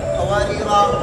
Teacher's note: وقف کریں گے تو قواریرا، دو زبر کو الف سے تبدیل کرتے ہیں